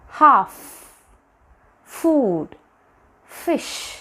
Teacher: we use the upper teeth and the lower lip for making this sound